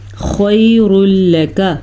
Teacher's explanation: ایسا ادغام ہوگا جس میں غنہ بالکل بھی نہیں ہوگا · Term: ادغام بلا غنہ